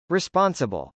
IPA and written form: rispˈɑnsəbəl (responsible)